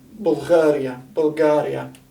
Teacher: Arabic also lacks a G, just a plain G, Bulgaria, and in that case it'll substitute a Ghain, and they'll pronounce it Gha, Bulgaria, Bulgaria.